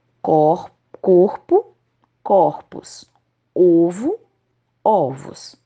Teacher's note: alguns substantivos singulares que possuem o fechado tonico o quando passam para o plural ficam com a vogal aberta ó